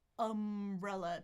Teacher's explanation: Tongue is in the middle. Jaw is a little bit more open than schwa.